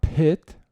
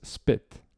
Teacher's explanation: when your p is preceded by an s, that aspiration, that puff of air, that H-like sound gets lost, right? So pit with an H versus spit, right, without an H.